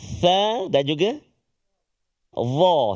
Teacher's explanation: 3 huruf yang keluar hujung lidah kita sikit bila kita sebut dia.